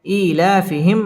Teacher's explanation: মিম সাকিন ইজহারে খাস গুন্না ছাড়া পড়তে হবে